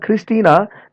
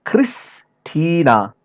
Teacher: If we say the word Christina, this I, first I is pronounced little shorter than the second one.